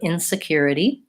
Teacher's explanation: it has the itty, the flap T towards the end, and the stress is on the third syllable